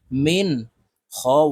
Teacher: এই নুনকে গুন্না ছাড়া স্পষ্ট করিয়া পড়ব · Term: ইজহার